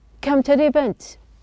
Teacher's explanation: the T is pronounced as a flap.